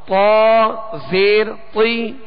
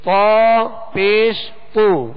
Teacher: پیش کو ادا کرتے ہوئے ہونٹ ویسے گول کیے جاتے ہیں، ہونٹ گول نہیں کریں گے تو پیش ادا نہیں ہوگا